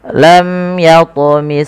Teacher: dibaca dengan jelas suara mimnya tanpa ada penahanan dari bunyi mimnya tidak dibaca lam tapisung saja karena di sini ada bacaan izhar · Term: izhar syafawi